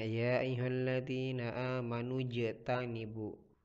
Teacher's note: Jadi dipantulkan huruf j-nya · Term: kalkalah sugrah